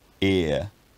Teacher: centering diphthongs which go from the periphery of the vowel space into the centre, like ear. I'm going to produce a few monophthongs and a few diphthongs.